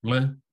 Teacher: there is a unique sound that's a double lateral flap